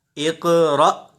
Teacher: ہم حمزہ ساکنہ کو جھٹکا دے کر پڑھیں گے